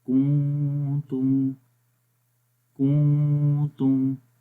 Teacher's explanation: آواز ناک میں گونج رہی ہے، یہ اخفا ہے، آواز نون کی ہم چھپا کر پڑھ رہے ہیں ناک کے اندر. تو یہ نون کا مخرج تھا.